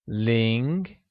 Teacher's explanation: Ling, pronounced in a mid-rising tone